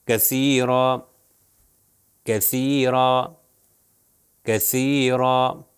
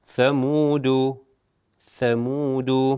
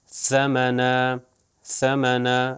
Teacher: سب میں سا کا جو تلفظ کر رہا ہوں وہ ہمیشہ زبان کو اوپر اور نیچے والے دانتوں کے درمیان میں لے کر آ رہا ہوں اور اس سے ادا کر رہا ہوں. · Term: 3 نقطے والا سے